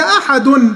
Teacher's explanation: لما وقفنا عملنا قلقلة